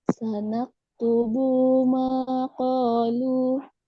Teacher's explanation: keduanya O dengan lu sama-sama mat tabi'i, maka bacaan panjangnya harus sama. Qalu, nggak boleh lebih.